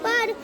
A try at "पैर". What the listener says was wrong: देखो पैर नहीं, पैर, आय की मात्रा लगा है। जहाँ पे आय की मात्रा होती है वहाँ आय उच्चारण होता है पैर।